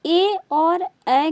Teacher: कंठ तालव्य स्वर है, यानी कि ए ऐ के उच्चारण में आपका कंठ भी काम करेगा और तलवा भी काम करेगा